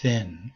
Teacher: the breathy or unvoiced th as in thin